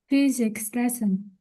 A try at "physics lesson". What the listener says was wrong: No, that's not the intonation that I used. It was a physics lesson.